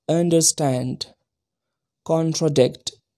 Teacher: two unstressed syllables followed by one stressed syllable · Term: anapest